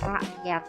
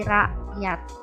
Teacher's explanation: Bunyi hamzah ini biasanya huruf K-nya tidak diucapkan secara jelas, seperti kata rakyat. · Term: alofon hamzah